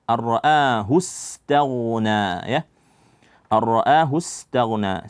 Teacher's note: kita masukkan kepada ra tanpa ada dengung di situ arraa a di sini ada mad badal panjangnya Cukup dua harakat saja